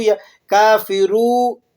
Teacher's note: را واو پیش رو بنا دیا جاتا ہے، اسے کھینچ کر پڑھا جاتا ہے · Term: لحن جلی